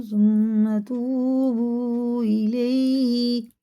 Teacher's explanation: یہ مد منفصل ہے، 4 الف کے برابر، اسے کھینچ کے پڑھنا ہوتا ہے